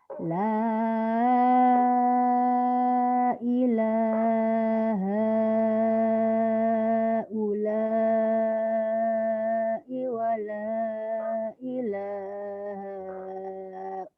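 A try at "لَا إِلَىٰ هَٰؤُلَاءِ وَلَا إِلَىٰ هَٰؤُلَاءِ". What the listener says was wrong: Iya, kepanjangan tadi. harusnya 5 tutupan, kamu kepanjangan jadi habis di tengah. Iya boleh, kan tadi sudah dicontohin. La ilaha ula'i wa la haula'i wa la ilaha ula. Haula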